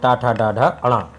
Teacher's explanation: जो ट वर्ग है ट , ड, ढ, ण ये होते हैं हमारे मूर्धन्य।